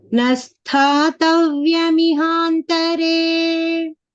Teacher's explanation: the first ta is Mahapranaha and there is a dvitva there